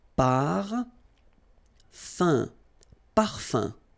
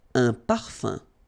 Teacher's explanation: So remember, even if you've got this UM like that, phonetically it's exactly the same thing as if you would have UN. So it's nasal and it's un. So it really goes in your nose. You don't pronounce the M at all.